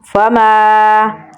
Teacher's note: میم کو لمبا پڑھیں گے کیونکہ اس کے آگے الف مدہ ہے